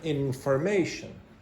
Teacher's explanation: the secondary stress is on the first syllable here, and the primary stress is on the third syllable.